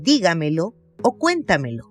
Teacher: que lleva la sílaba tónica en la anterior a la antepenúltima sílaba